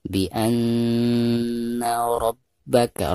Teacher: Karena nun yang bertasdid itu merupakan huruf gunah ya. Jadi dari a harus ditekankan ke na disertai dengan gunah